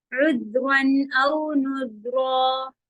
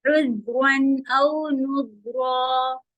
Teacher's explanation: عذ میں آواز چلے گی رخاوا کے ساتھ